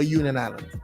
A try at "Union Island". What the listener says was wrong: Union Island don't have a T in it. You said Union Island.